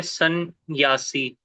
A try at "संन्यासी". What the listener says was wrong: दो है दो है, आपने खुद दो उच्चारण किए, सन न्यासी, दो हो गए ना। न्यासी। नहीं, सन न्यासी।